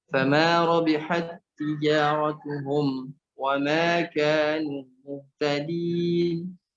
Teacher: Tak yang pertama ini masuk ke tak yang kedua langsung tanpa dibaca rabihat tija ya. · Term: idgham mutamatsilain